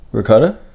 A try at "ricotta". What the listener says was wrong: It sounds like you putting a G in it.